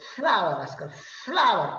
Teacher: दात आणि ओठ दोन्ही पण हवेला अडवतात ते दंतेष्ठ आणि मग फ्लावरचा उच्चार इंग्लिश मध्ये फ्लावर फ्लावर पहा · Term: दंतौष्ट